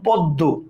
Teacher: দয়ের সাথে মফলা বসছে, দয়ের উচ্চারণটা দ্বিত্ব হয়েছে